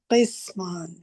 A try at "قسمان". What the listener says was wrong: کاف کے نیچے زیر ہے.